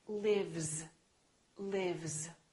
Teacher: Live. This is a voiced sound. Vv. Therefore, this S is also going to be a voiced sound which is Z.